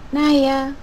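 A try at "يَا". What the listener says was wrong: Titiknya di bawah. Titiknya di bawah. Tadi ada beberapa salah sedikit di panjang pendek di awal, sama titiknya masih ketukar di atas sama di bawah ya, kurang teliti. Ba jadi nun ya.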